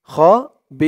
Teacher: এখানে অক্ফ করার কারণে জেরের পরে ইয়া সাকিন, এক আলিফ টানটা 3 আলিফ টান হয়ে গেছে। বি বলে 3 আলিফ টান দিয়ে এই র কে ধরবে, রর উপরে 2 পেশ টানবেন, এটা সাকিন হয়ে যাবে। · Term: মধ্যে আরজি